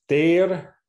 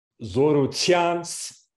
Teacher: the words ter, that's unaspirated, zorutians, there it's aspirated.